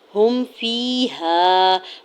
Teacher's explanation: ہا کی پیش کو میم ساکن کے ساتھ ملاتے ہوئے پڑھنا ہے ، فیہا، یا ساکن سے پہلے فا کے نیچے زیر ہے،